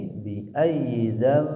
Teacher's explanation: Sini ada suara nun yang dirubah ke huruf mim ya. Karena nun sukunnya bertemu huruf ba. Asalnya bunyi zan jadi dam.